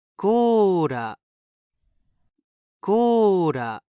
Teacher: It's close to an L, but more similar to a light D sound. Very light, though.